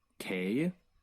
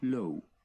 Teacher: G as in gå, grad, However, when G is in front of unstressed E, with a few exceptions, and at the end of a word, G combines with the preceding vowel to form a diphthong.